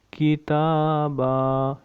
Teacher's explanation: ادھر ہم نے وقف کیا، تا کے اوپر کھڑا زبر، ایک الف مقدار لمبا کریں گے